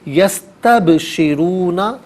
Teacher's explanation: با ساکن ہے، حرف قلقلہ ہے تو یہاں پر قلقلہ ہونا چاہیے، یعنی آواز لوٹتی بھی محسوس ہونی چاہیے